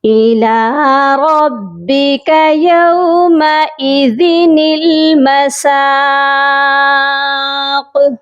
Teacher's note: یومئذ المساق، اور قاف آپ دیکھ لیجئے کہ حروف قلقلہ ہے، جب آیت پر ہم وقف کریں گے تو قاف ساکن ہو جائے گا، تو ہم اس پر قلقلہ کریں گے